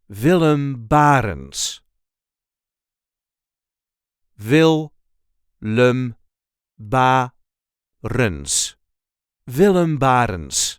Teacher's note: there is a light emphasis on the first syllable of his last name